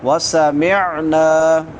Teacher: عین وسط حلق سے حلق کے درمیان سے اور بعد میں الف مدہ ہے